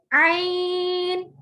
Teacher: عین، یہ درمیان والے حلق سے ادا ہوتا ہے۔